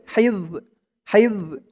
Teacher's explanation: হার উচ্চারণটা গলার ভিতর থেকে চিকুন হয়ে বের হবে।